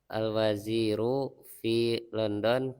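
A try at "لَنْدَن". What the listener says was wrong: London. Tidak ada O, bahasa Arab tidak ada O. London. Jadi fi Landana ya.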